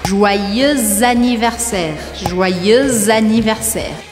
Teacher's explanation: Eu faço a liaison entre o X de joyeux e o A de anniversaire. Ou seja, que eu grudo a pronúncia das duas palavras.